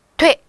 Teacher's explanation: 말하자면 되어라고 하는 글자, 이렇게 되어라고 두 번에 걸쳐서 입술을 움직여 소리내는 것이지만 한 번에 빠르게 소리내다 보니 돼 이렇게 된다는 거예요